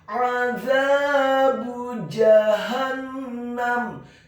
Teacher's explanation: Kata azabu, huruf ainnya ditekankan keluar dari tenggorokan bagian tengah fathah 1 harokat. Huruf zanya dibaca tipis, tarqiq, lidahnya agak keluar sedikit, fathah 2 harokat karena setelahnya ada alif.